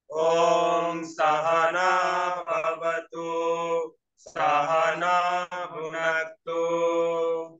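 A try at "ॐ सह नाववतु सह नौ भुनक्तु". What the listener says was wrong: सौ को और भी थोड़ा गले से नीचे जाना पड़ेगा। स सह स नीचे, सह ना ऊपर जाएगा तुरंत ही। सह ना वातु।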